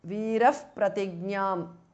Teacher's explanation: Veeraha, Visarga changes to Upadhmaniya.